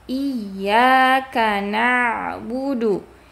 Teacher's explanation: huruf ain, ingat dia ada sifat bainiah, ada mengalir suara sebagian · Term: sifat bainiyah